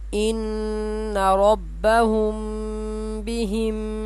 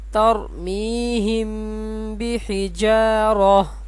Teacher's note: اور میم ساکن کے بعد با آئے تو میم ساکن کو غننے کے ساتھ پڑھیں گے. میم ساکن کا اخفا.